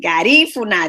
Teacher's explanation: The accent is on the second syllable.